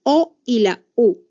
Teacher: vocales posteriores que van a sentir en la parte de atrás de la cavidad bucal